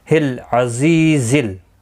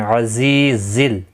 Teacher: زا حروف صفیریہ میں سے ہے، سختی کے ساتھ ادا کیا جائے گا، سیٹی کی آواز ہوتی ہے اس میں